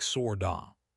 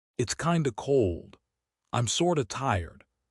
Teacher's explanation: The T in sort of is a flap T, soft D. So it sounds like sorda.